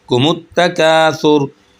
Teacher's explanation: काफ को हम एक अलिफ के बराबर खींचेंगे क्योंकि अलिफ मद्दा है।